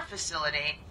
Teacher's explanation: To pronounce facility, have in mind that the size of the syllable indicates where the accent or stress is. In this case, the accent is in the second syllable, corresponding to sil.